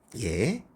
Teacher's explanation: 현대국어에서는 반모음 이 플러스 에예요